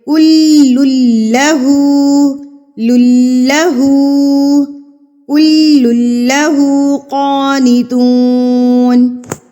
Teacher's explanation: بلہ ما فی السماوات والارض، کل اللہ، یہاں پر بھی سیم مسٹیک کرتے ہیں، کل اللہ پڑھ رہے ہوتے ہیں، اللہ پر کر رہے ہوتے ہیں. لام کو پر نہیں کرنا، لام کے اوپر تشدید ہے تو اس کو مضبوطی سے پڑھیں گے